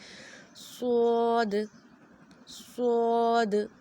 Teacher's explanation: زبان کی نوک اور اوپر نیچے کے دانت آپس میں ملائے تھے، اور ہم نے صوت کو سختی سے ادا کیا تھا، اس میں سیٹی کی آواز بھی ہوتی ہے۔ اور اب جو دوسری چیز یہ ہے کہ ہم نے اس کے مخرج کے ساتھ ساتھ اس کے موٹا ہونے کا بھی خیال رکھنا ہے، اسے ہم نے پر پڑھنا ہے، اور پر پڑھنے کے لیے ہم نے اپنی زبان کی جو جڑ ہے اس کو اوپر کی طرف اٹھانا ہے۔